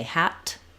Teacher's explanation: The T sound, the tongue is up high and it releases a burst of air.